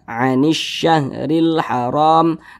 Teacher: Karena cara membaca huruf lamnya ini dia dibaca idgham. Jadi huruf lamnya ini dia tidak dibaca nih. Makanya di sini kan tidak ada tanda bacanya. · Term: alif lam syamsiyah